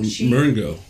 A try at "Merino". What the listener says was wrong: No, there's no G in it.